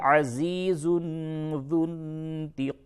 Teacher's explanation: عزیز اخفا ہوگا، تنوین کے بعد ذا ہے